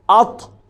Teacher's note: تا کے مخرج میں آپ نے زبان اٹھانی ہے، اس سے کیا ہوگا کہ یہ آواز موٹی ہو جائے گی، بھاری ہو جائے گی۔ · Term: تا کا مخرج